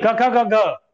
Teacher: क वर्ग को अपन कहते हैं कंठ ध्वनि, क्योंकि ये कंठ से उत्पन्न होती है